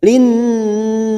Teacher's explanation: Nun yang bertasdid gunnah musaddadah kita tekan selama 3 harokat